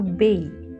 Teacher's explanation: Letter A has glide. So it is a diphthong sound. So we have a glide from A to E. So bay, okay, not bay.